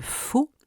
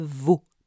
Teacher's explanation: au niveau labiodental le rapprochement de la lèvre inférieure et des incisives supérieures produit en français la sourde de faux et la sonore de veau